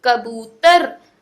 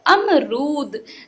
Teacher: बड़े ऊ की मात्रा में हम लोग छोटे ऊ की मात्रा की अपेक्षा दुगना समय लेते हैं उसका उच्चारण करने के लिए